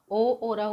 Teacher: ओ और औ का उच्चारण स्थान कंठ और ओष्ठ है। इसका अर्थ यह है कि कंठ से यह ध्वनि निकलती है और होठों का आकार परिवर्तन होता है। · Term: कंठोष्ठ